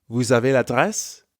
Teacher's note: Because vous ends in S, we have a liaison between vous and avez.